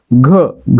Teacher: ज्या वर्णाचा उच्चार करताना ह चा उच्चार सोबत होतो त्याला देखील आपण महाप्राण म्हणतो उदाहरणार्थ घ्या मध्ये उच्चार करताना ग सोबत ह चा उच्चार होतोय